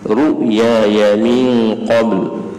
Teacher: ya yang pertama tu mat dua harakat ya yang kedua tu tak ada mat tak boleh panjang